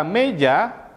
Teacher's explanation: huruf e dalam kata meja memiliki bibir yang tidak bulat nah bunyi vokal ini cenderung terbuka sehingga arus udara dapat mengalir